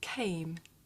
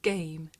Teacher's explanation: this voiceless sound that you hear at the beginning of the word came and its voiced partner that you hear at the beginning of the word game